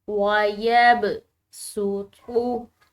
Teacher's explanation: ہم نے اس صاد کی جگہ پر سین کو پڑھنا ہے، یعنی کہ صاد کی آواز نہ ہو بلکہ سین کی، لکھنے میں صاد، پڑھنے میں سین.